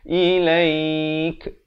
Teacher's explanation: Jangan baca ilaik, itu tahu. Ilaik, dan di akhir diberikan bunyi hamas, bunyi angin itu